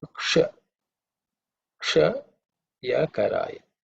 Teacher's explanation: sha, which is the cerebral sha